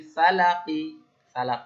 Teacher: তখন এই কফ সাকিন, কফ যেহেতু কলকলার অক্ষর, সাকিন হয়ে গেলে সেটা কলকলা করতে হবে